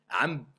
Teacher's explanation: il se prononce comme un mime franc avec nasalisation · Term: al-iqlab